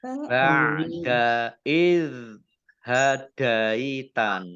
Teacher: zal sukun ini bukan kolkolah ya, ingat bukan kolkolah, jangan dipantulkan